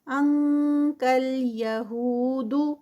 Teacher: انک آگے کاف آ رہا ہے نون ساکنہ کے بعد تو اسی کے مخرج پہ جائیں گے اور یہاں پر اخفا ہوگا این کے کی ساؤنڈ والا. کل یہود، یہو ہو پہ 2 کاؤنٹس، واو مدہ.